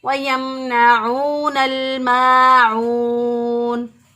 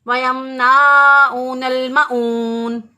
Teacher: جب ایک الف کے برابر معون کو لمبا کرنا ہے